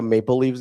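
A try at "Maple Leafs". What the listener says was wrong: Leaves? With a V?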